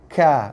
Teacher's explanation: Kaf, bunyi dia tak bulat. Dia bunyi ka, bukan ko. Ka dan nipis.